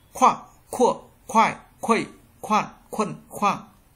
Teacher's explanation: Chữ K các bạn nhớ bật hơi.